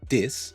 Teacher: changing the TH sound to a T or a D